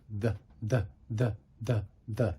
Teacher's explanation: the voiced TH is the, not th, but the. There is actually a sound there. Now, of course, it's very slight.